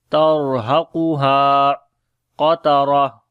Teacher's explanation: Qaf and ra we read in heavy sound, and this ta becomes ha, and we make hums quality on the ha. · Qaf we read in heavy sound, ha we long due to alif madda.